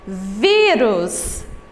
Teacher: Ela é a penúltima sílaba mais forte. Nesse caso, a classificação será paroxítona.